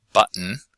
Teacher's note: button where there's no actual bit at all but instead the the glottis is closed the vocal folds are used to make an interruption in speech to indicate that there's a consonant there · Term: glottalized